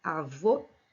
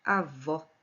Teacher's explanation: muda aí o fonema que de fechado passa para aberto